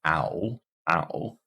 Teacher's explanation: front for flowers this is ow ow so we start uh Central low and then we move high back to get ow